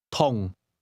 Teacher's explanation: Did you hear the mid-falling tone?